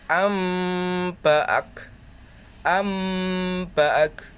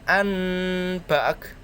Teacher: Iklab hanya mempunyai satu huruf yaitu ba. Apabila nun mati ataupun tanwin bertemu dengan huruf ba, maka suaranya merubah menjadi mim.